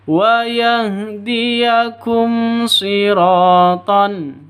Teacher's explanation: Di sini ada mim mati bertemu dengan shad. Jadi bacanya jelas, terang ya, tidak boleh disentak, tidak boleh didengungkan. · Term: izhar safawi